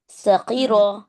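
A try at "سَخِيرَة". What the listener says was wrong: ख्वा को मोटा करना, ख्वा पे जेर भी रहा तो मोटा करना। सखीरा।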